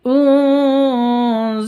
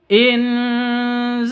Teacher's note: nun mati bertemu dengan Za samar didengungkan